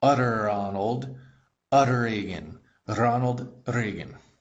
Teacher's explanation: When you say utter in English, your tongue bounces off the roof of your mouth. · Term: Russian R